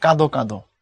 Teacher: অর্থাৎ ওখানে বলা আছে কান্তটা ধাতু, ধাতু যদি পরপর 2বার আসে তখন সেটা দ্বিরুক্ত আকারে আসে, তখন তার সাথে একটা অযুক্ত হয়, এবং অটাকে তুমি পড়ার সময় অ পড়া যাবে না, পড়তে হবে ও